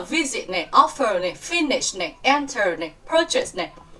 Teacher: trọng âm sẽ nhấn âm 1 nha